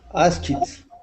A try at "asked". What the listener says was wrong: The only time we use the ED sound is if there's a T. In this case, we have a K. So it's asked. Asked.